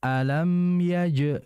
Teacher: jim ini bersifat syiddah dan jahar. Jahar artinya enggak berdesis, syiddah itu enggak mengalir. Jadi dipantulkan.